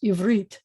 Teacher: multisyllabic word, but the accent's at the end of the word